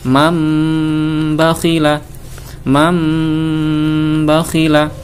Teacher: Mengganti bunyi nun sukun atau tanwin dengan bunyi mim. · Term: iqlab